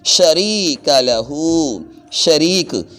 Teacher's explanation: شریک، اس میں را کو لمبا کیا ہے، را کے آگے یا ساکن ہے تو یہ ہے یا مدہ. تو جب یا ساکن آ جائے جس لفظ کے آگے اس لفظ کو بھی لمبا کریں گے ایک الف کی مقدار.